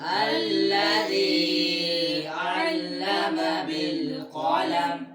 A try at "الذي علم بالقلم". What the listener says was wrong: ध्यान रखो इस पर मद तो नहीं है जो आप मद की तरफ जा रहे थे الذي علم بالقلم